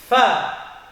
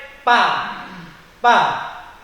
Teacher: Sekali lagi, cara melafadzkan huruf fa yaitu bibir bawah, tengah bibir ini dengan 2 buah gigi yang atas bersentuhan.